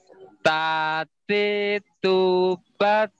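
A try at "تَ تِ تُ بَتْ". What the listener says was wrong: oke, lumayan. Tapi aliran udaranya belum kedengar ya, jadi latihan lagi.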